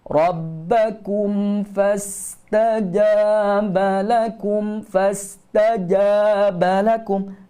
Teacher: Ja jangan berangin. Panjang dua harakat.